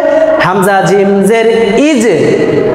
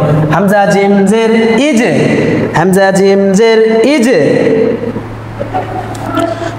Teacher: ইজ একটু প্রতিধ্বনি আওয়াজ দিয়ে পড়তে হবে